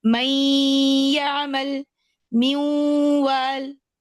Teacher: लेकिन गुन्ना जो है हम अगले हर्फ के मखरज के ऊपर कर रहे होते हैं। यानी मैं मीम के बाद या पढ़ूंगी और या के ऊपर ही गुन्ना कर रही हूँ, मीम के बाद वाव पढ़ूंगी और वाव के ऊपर ही गुन्ना कर रही हूँ।